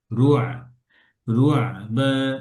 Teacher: আইন পড়ার সময় ঠোঁট গোল থাকবে না, আইন ছড়া যাবে, হ্যাঁ, আইন পাতলা হবে।